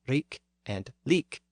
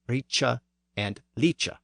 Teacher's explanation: the northern dialect tended to retain the hard K sound, where southern English had the softer CH sound. So here, the northern poet renders the words as rik and leek.